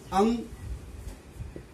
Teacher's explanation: यह ध्वनि नाक से निकलती है, पर यह अ के सहारे बोली जाती है। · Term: अनुस्वार